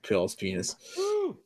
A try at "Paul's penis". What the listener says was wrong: It sounded like you said pal's penis.